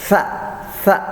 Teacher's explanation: Jadi sa itu, ujung lidah bertemu dengan gigi seri bagian atasnya